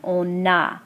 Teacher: You'll hear the pronunciation of the letter N, on a. So there is liaison between the N and the A.